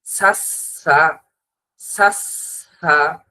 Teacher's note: সা উচ্চারণ করার সময় সা জিহ্বার আগা সামনের উপরের দুই দাঁতের আগার সাথে যখন লাগবে, উচ্চারণের সময় মুখের ভিতর থেকে বাতাস বের হবে। যখন আপনি এখনো এই তাসদিদের উচ্চারণটা করতে যাবেন, তখনও মুখের ভিতর থেকে বাতাস বের হবে।